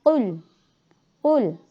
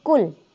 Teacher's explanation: Qaf itu masuk ke tenggorokan. Suaranya qul. bukan seperti kaf.